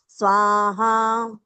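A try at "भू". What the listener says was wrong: భూ మహాప్రాణం రావాలి కొంచెం. ఇక్కడ మనము లోపల నుంచి చదవాలన్నమాట. భూ.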